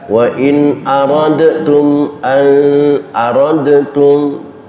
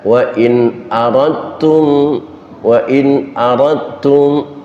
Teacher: berani-beraninya dalnya dimasukkan ke huruf ta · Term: hukum idgham